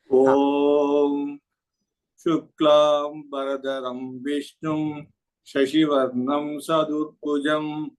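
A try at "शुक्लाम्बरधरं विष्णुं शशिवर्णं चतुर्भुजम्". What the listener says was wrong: One small observation is maybe on the Mahaprana, you can stress little more. Shuklambaradharam Vishnum Shashivarnam Chaturbhujam. Wherever there is Mahaprana, which is highlighted in green color, you can say that. And then Cha and Ja, it is Shashivarnam Chaturbhujam.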